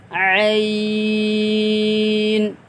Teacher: کل بھی ہم نے بتلایا تھا کہ عین جو ہے یہ حلق سے نکلتا ہے